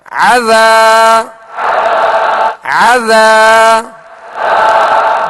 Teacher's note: عین کو درمیان حلق سے ادا کرنا ہے تاکہ حمزہ کی آواز اس میں پیدا نہ ہو